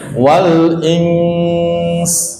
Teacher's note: Cara wakafnya begitu ya, wal ins, jangan begini, wal ins, jangan. Ikhfa-nya nggak boleh hilang, kan nun mati bertemu sin hukumnya ikhfa, jadi ikhfa-nya nggak boleh dihilangkan.